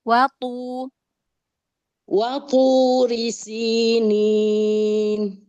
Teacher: Langsung ke to, jangan berhenti wanya. Jadi seperti taknya kayak ada tasdid